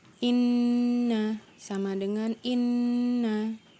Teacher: Oke, naam, di halaman berikutnya kita mengenal huruf yang ditasyid, yaitu suaranya ditekan, ditahan 2 harokat dan berdengung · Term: nun tasyid